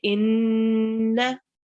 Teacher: with Nun mushaddad and Mim mushaddad, we know that we have to make ghunna and stay on it for 2 seconds.